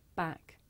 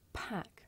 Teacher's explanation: With the voiceless sound, there's a big puff of air. You can feel it with your hands.